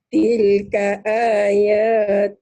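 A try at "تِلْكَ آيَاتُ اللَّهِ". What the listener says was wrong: Bagus, tapi tilnya jangan ditahan ya. Ini idhar hukum lamati. Tilka, jangan jangan kelamaan. Ya, lamnya kan lamati nih, idhar hukum lamati. Tilka tekan di sini. Tilka ayatullah.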